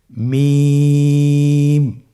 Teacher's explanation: মিম হরফটি উচ্চারণের ক্ষেত্রে অবশ্যই বারিক হবে, পাতলা হবে এবং তিন আলিফ টেনে উচ্চারণ করতে হবে। · হরফটির উচ্চারণ স্থান 2 ঠোঁটের শুকনো স্থান থেকে উচ্চারিত হয়।